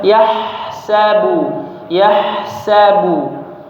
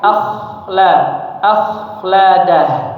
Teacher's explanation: bedakan antara huruf ha dan kha. Yang pertama itu huruf ha, bersih, tipis ya.